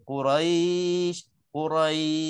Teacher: Sebab shin tu tak mati. Kena matikan shin tu, barulah dia boleh Quraisy, Quraisy sampai 6 harakat. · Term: mat lin